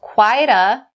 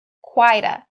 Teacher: We change that T sound in quite to a D sound and take it over to a. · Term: connecting sounds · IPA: /kwaɪ-də/